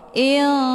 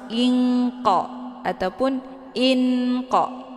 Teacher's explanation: Nah, cara bacanya, harokat tanwin kisrahnya disamarkan, kemudian siap-siap menuju ke huruf qaf. · Itu bacaan yang salah, tapi disamarkan dulu harokat tanwinnya, kemudian disertai dengan dengungan. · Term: ikhfa ab'ad